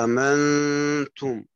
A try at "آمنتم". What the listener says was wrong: لا هيك أدخلت همزة أخرى رابعة، آمنتم.